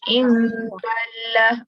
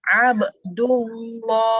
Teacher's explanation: Dia kena tebalkan apabila baris atas atau baris depan berjumpa perkataan Allah. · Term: dibaca tebal